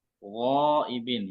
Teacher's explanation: hendaknya kita menyempurnakan ya sifat tafkhim atau tebal yang dimiliki oleh huruf ghain ya. Jangan sampai setengah-setengah tebalnya gitu ya.